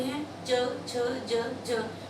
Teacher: ये हमारे तालु जो है उसको जीभ हमारी टच करती है। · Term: च वर्ग